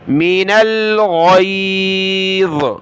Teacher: غین نکالے گلے سے، اس کی جگہ آپ نے گاف نہیں پڑھنا، گئی نہیں پڑھنا، غین پڑھنی ہے۔